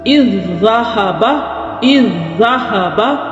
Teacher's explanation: تو ہم نے اس زال کا جو ساکن زال ہے اس کو مدغم کر دیا، اس کو ضم کر دیا دوسری زال کے اندر، اس کو کہیں گے ادغام متماثلین۔